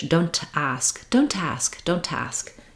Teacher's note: It's much more typical for us to drop the T here because it just allows us to smoothly connect. If I have to use an aspirated T, we typically wouldn't connect it. That would be more British.